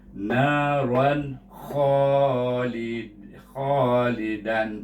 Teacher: Gabungkan dengan bunyi nun, ron tapi izhar, jangan dipanjangkan dan jangan didengungkan. Bunyinya naran khalidan. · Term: izhar halki